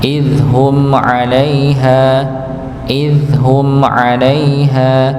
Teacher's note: Berikutnya humnya yakni mim sukun ketemu dengan huruf ain maka dibaca jelas ya